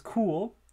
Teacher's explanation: So both of those stops at the beginning of the words are aspirated because they're at the beginning of the words, but technically they're also at the beginning of a syllable.